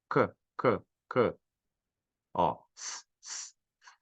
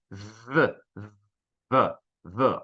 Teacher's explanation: não são sonoras, não vibra as cordas vocais na hora de falar